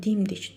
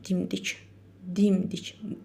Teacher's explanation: Çoxlama dərəcəsində vurğu əvvələ düşəcək, amma dimdik sadə söz vurğu sonda olacaq.